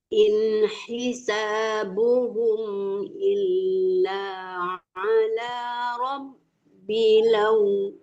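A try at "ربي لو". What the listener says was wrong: Panjang. Dia nih nggak boleh terlalu tertahan lah.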